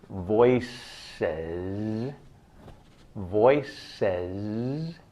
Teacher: If you say the word voices, voices, and hold your voice box, when you say the S sound in voice, your voice box doesn't move